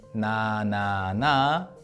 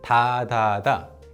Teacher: It went from an N-like sound to a D or TH-like sound. From the softer na, you change it to the more abrupt and emphasized da, da, da.